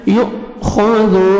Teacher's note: حمزہ کو مجزم ہے جھٹکے سے پڑھیں گے یؤخذ خا کو موٹا کر کے پڑھیں گے زال کو نرمی